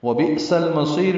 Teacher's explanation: سین صفیریہ میں سے ہے، حروف صفیریہ میں سے سیٹی کی آواز سے ادا ہوگا · حمزہ ساکن جھٹکے سے ادا ہوگا